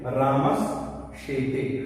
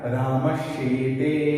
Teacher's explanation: उदाहरण देखिए, जैसे रामस शेते, रामस में यहाँ दंत स है, उसके पश्चात योग होना चाहिए इनमें से किसी का योग है, शेते का श है, मिला में योग, तो इस रामस के दंत स के स्थान पर तालव्य श हो जाएगा